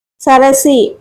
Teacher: సరసి అంటే ఏంటి మూడు లఘువులే సరసి సి కి దీర్ఘం లేదండి ఇక్కడ దీర్ఘం ఉన్నట్టు పడింది సరసి మూడు దీర్ఘాలు లేవు కాబట్టి మూడు లఘువులు